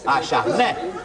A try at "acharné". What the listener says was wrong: C'est un et aigu.